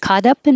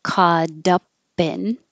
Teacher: Caught up in, T changes to D.